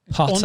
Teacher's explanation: the R at the end of Potter is unvoiced